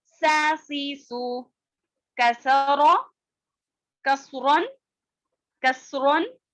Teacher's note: سین کی آواز باریک اور سیٹی والی ہوتی ہے